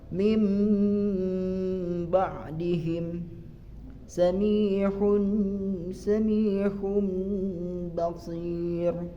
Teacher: merubah nun sukun menjadi mim sukunabila nun sukun atauanwi beremu denganuru maka nun sukun dirubah menjadi mim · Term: iqlab